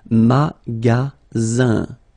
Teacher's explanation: the ending here is IN, so it's nasal, it goes in your nose, and it's un.